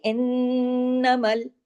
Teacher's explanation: نون پہ تشدید ہے، نون پہ غنہ ہوگا، ڈبل نون ہے نا اس لیے